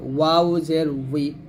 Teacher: দুই ঠোঁট গোল করে এই ওয়াউটা উচ্চারণ নিয়ে আসতে হবে